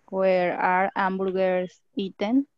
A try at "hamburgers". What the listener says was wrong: Hamburgers. Ham, yes. It sounds like a J.